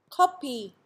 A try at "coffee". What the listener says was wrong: the Korean speaker is clearly pronouncing both words with a p sound and is finding it hard to clearly enunciate the f sound.